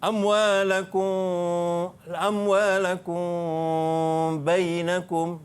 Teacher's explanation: Ikhfa syafawi ni kena dengung, dua harakat dan bibir atas bibir bawah dekat-dekat nak bersentuh, tak bersentuh. Agak-agak kita boleh letak selai kertas.